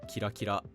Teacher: If you have an onomatopoeia word like kirakira, it's pronounced flat in isolation, but when modifying a verb, it becomes Atamadaka.